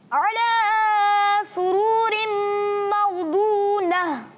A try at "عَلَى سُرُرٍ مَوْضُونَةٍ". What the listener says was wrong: سُرُورٍ کھینچنا نہیں ہے۔